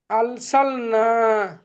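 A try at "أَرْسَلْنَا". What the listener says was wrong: আল সালনা নে, আর সালনা, রটা হবে, রটা পুর হবে, আর মুখটা গোল হবে, আর সালনা। হুম, আর সালনা।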